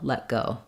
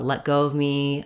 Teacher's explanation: you're gonna have kind of the Le sound and then the instead of saying that t the air is just going to stop and I'll release right into the G of go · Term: unreleased stop consonants